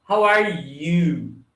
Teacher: Esse you no final, com mais entonação, ele diz que a pessoa realmente quer saber sobre você.